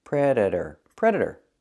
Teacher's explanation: The T is pronounced as a fast D.